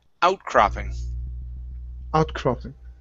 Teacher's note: the stress is at the very beginning